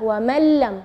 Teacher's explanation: huruf nunnya tidak ada, atau kita dibilang idgham ke huruf berikutnya dan gunnahnya tidak ada, wa man lam ya. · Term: idgham bila gunnah